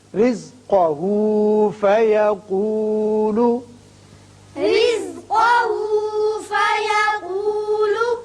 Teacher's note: یہ میں نے دونوں لفظوں کو اس لیے ملایا کہ یہاں وقف نہیں ہے، ملا کر پڑھنا ہے · را باریک ہوگا اس لیے کہ نیچے زیر ہے، جب بھی زیر آئے را کو باریک پڑھتے ہیں. قاف پر ہوگا رِزْقَهُ فَيَقُولُ.